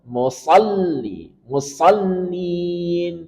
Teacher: Kemudian masuk ke lam yang bertasydid. Berikan sifat nabrah.